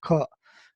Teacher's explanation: ka is touched, alpa prana, so no aspiration, and khara, hard